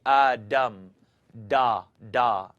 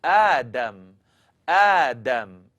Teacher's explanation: Make the dal into a D, and your tongue's going to kind of curl up and hit the top of your mouth. This is what I don't want you to do, is say Adam, da, da.